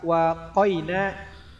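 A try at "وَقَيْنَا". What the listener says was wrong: Wahnya jangan dipanjangin kayak ada alifnya.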